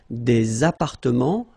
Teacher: Remember, final S and final T are not pronounced here.